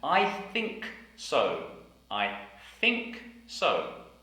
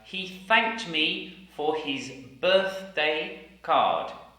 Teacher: unvoiced th the unvoiced th is a sound like I've just air blowing between the teeth and the tongue